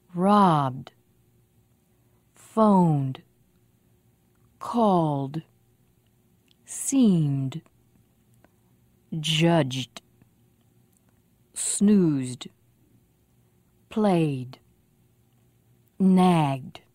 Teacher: with voice also so it sounds like d listen robbed and notice the vowel before the voiced consonant is longer